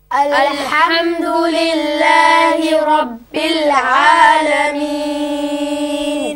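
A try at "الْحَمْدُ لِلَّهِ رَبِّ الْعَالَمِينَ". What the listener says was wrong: Okay, no bounce on the lam in Rabbil Alameen. Alhamdulillahi Rabbil Alameen.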